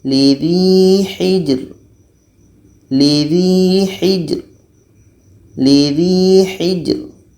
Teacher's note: Dan ro ini dibaca secara tipis karena melihat huruf yang ketiga berbaris di bawah.